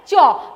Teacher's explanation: complete closure of the air passage then organs are separated slowly so that friction is hard like cha the sounds are coming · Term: affricate